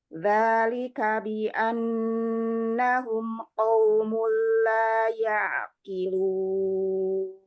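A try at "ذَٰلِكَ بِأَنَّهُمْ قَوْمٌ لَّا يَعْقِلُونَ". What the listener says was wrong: Nun bertasydidnya coba ditahan lagi, gunnahnya paling sempurna. Dzalika bi annahum qaumul la ya'qilun. Iya, huruf ainnya jangan terlalu ringan aja.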